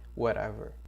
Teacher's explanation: whatever, esse T tem som de R aqui, tá bom? T tem som de R, whatever.